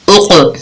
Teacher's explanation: قاف کے اوپر جزم ہے، یہاں پر ہم قلقلہ کر رہے ہیں، اس کی آواز پلٹ کر واپس آ رہی ہے